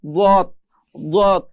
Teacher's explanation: জিহ্বার গোড়ার যে কোণা আছে এক পাশের কোণা, এই কোণার সামনের উপরের এক পাশের দাঁতের গোড়ার সঙ্গে লাগিয়ে পড়তে হয় দত